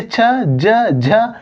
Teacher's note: च जीभ जो है तालु को टच करती है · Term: तालव्य